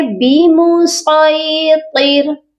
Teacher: اگر تو ہم اس کو پر پڑھیں گے، موٹا کر کے پڑھیں گے تو کلیئر ہو جائے گا کہ ہم نے صاد کو پڑھا ہے. اور اگر ہم نے صرف سی ٹی کا ساؤنڈ دیا اور اس کو موٹا نہ کیا تو اس کا مطلب ہے ہم نے سین کو پڑھا ہے.